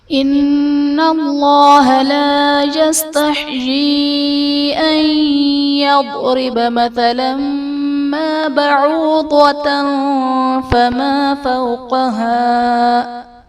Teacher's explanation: ان اللہ میں نون مشدد ہے، یہاں پر غنہ کریں گے، اور اس میں جلالت اللہ عز و جل کے لام سے پہلے حرف پر زبر ہے، تو یہاں پر اس میں جلالت اللہ عز و جل کے لام کو پر یعنی موٹا پڑھیں گے۔